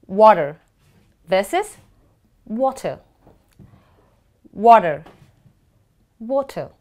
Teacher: the alphabet T Falls between two vowels the T becomes D so it becomes water versus water water water so you see